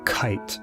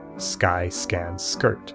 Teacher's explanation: take the sound K it comes out with a puff of air in the word kite but not in the word Sky these